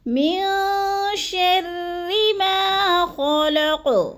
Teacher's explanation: را مشدد کو باریک پڑھنا ہے، کیونکہ را کے نیچے زیر ہے تو را باریک پڑھی جائے گی